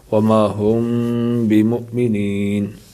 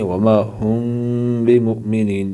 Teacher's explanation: اگر میم ساکن کے بعد با ہے تو غنہ کے ساتھ اخفاء ہوگا۔ اس کو اخفاء شفوی کہتے ہیں، جیسے وما ہم بمؤمنین، ہم یہاں غنہ کریں گے، وما ہم بمؤمنین، یہاں دیکھیں میم ساکن ہے، اس کے بعد با ہے تو غنہ کریں گے۔